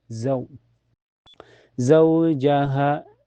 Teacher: karena ada wu sukun sebelumnya harakat fathah za dibaca lembut ya lunak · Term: sifat lin